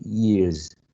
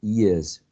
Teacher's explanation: General American speakers tend to use a short E instead of a diphthong